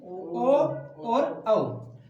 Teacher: कंठ और ओष्ठ के साथ में बोले जाने वाले वर्ण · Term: कंठोष्टम